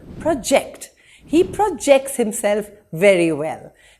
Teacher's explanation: when it's used as a verb the second syllable is emphasized